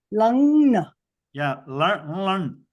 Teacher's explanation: So you start with the nasalized la.